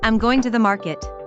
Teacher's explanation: Notice how the stress falls on going.